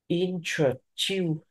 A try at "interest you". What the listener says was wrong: Thiếu S rồi, đọc lại coi, interest Không, đọc lại nè, đọc từ từ thôi. Interest. Interest. S, S, S. Interest. Interest. Interest. Interest. Interest. S yo. Interest you. Interest you. Interest you. Hoặc là đọc từ từ ra. Em đọc từ từ quen đi rồi nó sẽ nói interest you.